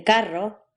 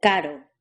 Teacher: This letter is pronounced in 2 possible ways. R, the R trill, as in carro, and D, the R tap, as in caro.